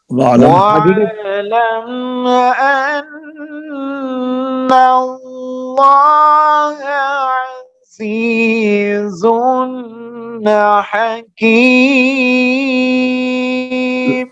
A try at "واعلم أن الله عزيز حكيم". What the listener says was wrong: अजीजुन के ऊपर गुन्ना नहीं है, अजीजुन हकीम।